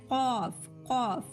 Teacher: اور اس کے بعد ہم دیکھیے 5واں مخرج غلسمی، یعنی زبان کی جڑ اور پرجیب کے جڑ کے ملنے سے قوف، कौफ, ठीक है। जबान की जड़ और ऊपर की छोटी जबान मिलने से कौफ निकलता है, ठीक है। अब इसी तरह जबान की जड़ और ऊपर की छोटी जबान के किनारा, ठीक है, किनारा मिलने से काफ, काफ निकलता है, ठीक है।